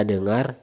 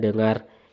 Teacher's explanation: bunyi e pada kata dengar dan e terbalik pada kata dengar yang biasanya diucapkan oleh sebagian masyarakat daerah NTT